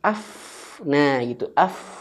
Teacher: badan bibir bawah nyentuh ujung gigi atas